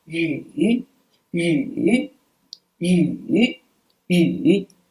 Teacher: yes it's ü with the third tone